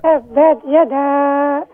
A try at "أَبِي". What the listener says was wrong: آبی آبی نہیں ہے, اس زبر کو آپ لمبا نہ کریں. ابی ابی.